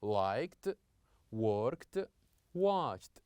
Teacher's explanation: we have words that ends with a d but we pronounce the end of these verbs with t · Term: the T sound